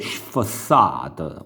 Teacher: la consonante S, quando è seguita da un'altra consonante e poi da una vocale, si legge come nel suono italiano di sh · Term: il suono sh